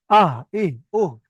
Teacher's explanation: কণ্ঠনালীর শুরু হতে হামজা হা উচ্চারণ হয়।